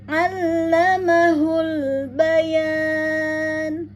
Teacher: fokus dengan ain, ya, terbaca atau diucapkan terasa di tengah tenggorokan, ya, ditekan Allah, ya, masuk ke lam bertasdid, maka dihentak.